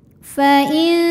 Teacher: Karena ada nun sukun menghadapi huruf jim, maka nun sukun dibunyikan samar-samar, siap-siap menuju jim disertai dengungan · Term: ikhfa hakiki